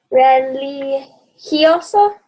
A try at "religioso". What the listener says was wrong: Make sure that your E is an E, okay? Yeah, that's where you got to practice your R's, right?